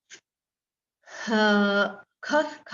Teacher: ख एक अघोष व्यंजन है क्योंकि हमने अभी देखा अघोष व्यंजन कौन से आते हैं पहला